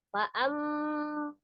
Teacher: Fa'amma, ada mim tasdid di sini wajib gunna, nun tasdid dan mim tasdid wajib didengungkan. Ditahan 2 sampai 3 harokat, kemudian suaranya dimasukkan ke rongga hidung ya.